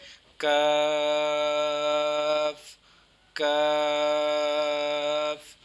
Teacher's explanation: زبان کی جڑ اور تالو کے سخت حصے سے ادا ہوتا ہے